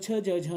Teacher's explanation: अस्माकम उच्चारण स्थानम अस्ति तालुः, हमारा उच्चारण स्थान है तालु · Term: तालव्य वर्ण